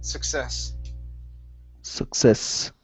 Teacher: Right here, the stress is on the very end. Success.